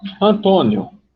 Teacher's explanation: o I e o O, que é um ditongo crescente, sai de uma semivogal para uma vogal